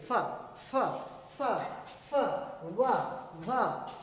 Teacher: ऊपर वाला दांत और नीचे वाला लिप्स आपस में टच करता है, तब जाकर आवाज निकलती है। इसे लेबिया डेंटल साउंड कहा जाता है, इसे लेबिया डेंटल साउंड कहा जाता है।